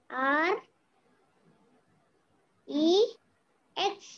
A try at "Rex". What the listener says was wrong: Rex. Now, not Rex. Rex. H, X, T, E. Don't drag the letters. Read them smartly.